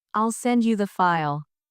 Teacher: in the phrase, I'll send you the file, the stress is on send and file.